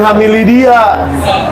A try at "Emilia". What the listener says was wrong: Emilia. Jangan pakai H. Jangan pakai H. Emilia.